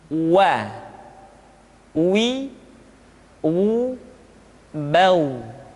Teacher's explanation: Selanjutnya huruf wa diucapkan dengan cara memonyongkan dua bibir kita.